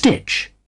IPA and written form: stɪtʃ (stitch)